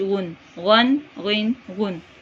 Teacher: غین کو 3 الف کے برابر لمبا کریں گے